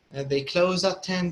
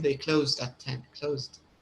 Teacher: So it's only the small D sound on the tip of your tongue and with your teeth at the end. So it's a light D. It's a light D sound.